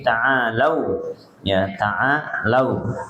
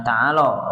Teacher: pastikan yang kita bacain adalah a-nya 2 harokat dulu, lau-nya ini ya linwo ya